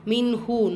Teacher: நூன் சுக்கூனுக்கு அப்புறமா ஹா, இது ஹார் உள்ளதை உள்ள மாதிரி ஓதணும், குன்னா செய்யக்கூடாது.